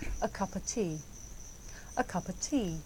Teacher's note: The words a and of become schwa